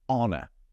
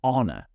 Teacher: I'm not pronouncing the h. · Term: silent letter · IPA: /ˈɒnə/